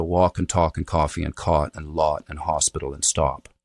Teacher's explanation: they're starting to go to use like a slightly lip-rounded vowel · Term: cot-caught merger